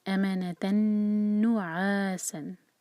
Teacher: تنوین کے بعد نون، تو ہم نون سے جوڑیں گے، نون کو ہولڈ کریں گے اور پھر نو پڑھیں گے · آگے ہے سین وسلنگ ساؤنڈ کے ساتھ